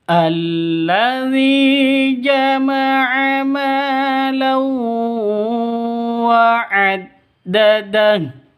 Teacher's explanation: Tanwin bertemu dengan wawu, masuk ke wawu, siap-siap masuk ke wawu, disertai dengung 2 ketukan atau 3 ketukan. Jadi idgham bi gunnah, idgham masuk bi gunnah dengan dengung, masuk ke huruf idgham bi gunnah dengan dengung 2 atau 3 ketukan.